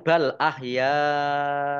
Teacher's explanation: karena bertemu dengan huruf hamzah di kata di dalam satu kata maka menjadi mad wajib muttasil dibaca panjang lima harus lima harakat dah tanwin bertemu dengan huruf Ain bacaan izhar